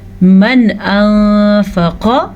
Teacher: من انفق، یہاں پہ اظہار کا قاعدہ ہو رہا ہے، نون ساکن کو ظاہر کر کے پڑھیں گے کیونکہ نون ساکن کے بعد حروف حلقی میں سے حمزہ آیا ہوا ہے